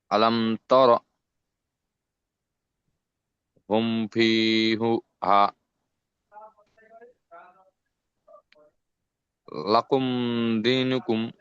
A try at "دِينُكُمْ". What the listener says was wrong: লাকুম দিনুকুম, দি ইয়া মাদ্দা।